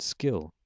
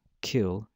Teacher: out after the after the stop after it's released or it could be pronounced without that air coming out after without the aspiration as it is in the word skill